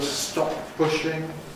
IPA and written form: ˈstɒp̚ ˈpʊʃɪŋ (Stop pushing)